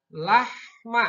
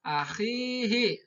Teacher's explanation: Lahma. Nah, halus. Kalau akhihi ada kasar suaranya.